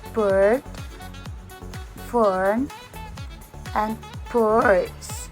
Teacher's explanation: This is a mid-central vowel which is used in most English accent as a hesitation sound